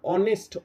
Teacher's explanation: আমরা দেখো হনেস্ট বলছি না, এইচ এর উচ্চারণ করছি না, অনেস্ট, এইচ দিয়ে শুরু হলেও এর প্রনাউন্সিয়েশনটা, উচ্চারণটা শুরু হচ্ছে দিয়ে, ভাওয়েল সাউন্ড দিয়ে।